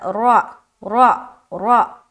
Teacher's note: را زبر را موٹا رکھیں گے، جل ادا کریں گے لیکن موٹا رہے گا